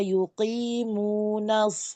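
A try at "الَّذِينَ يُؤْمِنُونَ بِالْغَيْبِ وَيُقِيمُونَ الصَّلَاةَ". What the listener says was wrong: Hardus shad jangan diangkat asah.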